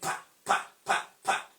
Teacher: There is no vibration, there is no vibration in our vocal cord. So when you say pa, pa, pa, pa, there is no vibration. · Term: Voiceless bilabia plosive